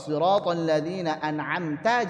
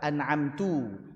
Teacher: harusnya fathah ta kok dibacanya tu. Ya sudah itu namanya lahanjali dan itu mengubah makna.